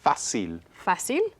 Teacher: So all of these words have stress on the second to the last syllable.